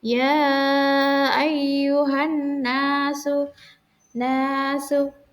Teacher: nunnya ditekan 2 harokat